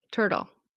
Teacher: So it's tur, and it's going to be like a D sound. D, a fast D, dull. Turtle.